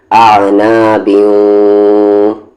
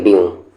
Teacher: تنوین یا نون ساکن کے بعد اگر 4 لیٹر آتا ہے، یا، واو، میم یا نون، تو وہاں پر بھی غنہ ہوگا یعنی آواز کو ناک میں تھوڑی دیر رکھیں گے، آنا بیوں نہ کہ بیوں، اور نہ ہی بیو نہیں، بیو بھی نہیں پڑھیں گے یعنی آواز ناک میں جائے گی غنہ ہوگا، تنوین یا نون ساکن کے بعد اگر یہ 4 لیٹر آئے تو۔